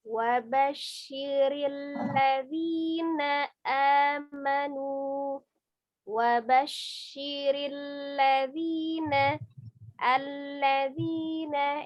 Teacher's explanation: Jadi lam itu sifatnya dia lunak, tengah-tengah ya, tawasud bain ya. Tidak sidah, tidak terlalu ditekan atau tidak rohwa, terlalu dilepas.